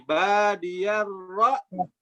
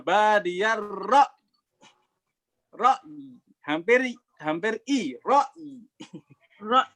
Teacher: terakhirnya ya kasroh, tetapi kasrohnya itu hampir mirip suara i